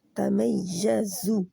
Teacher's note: سیٹی والی زا ہے، یعنی کہ زیڈ والی زو۔ تمیزو من نل لام کے مخرج میں رہنا ہے، ہلانا نہیں۔